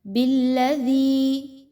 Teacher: آپ نے نرمی کے ساتھ دال کو پڑھنا ہے، زبان کو تھوڑا سا باہر نکال کے اور سافٹلی۔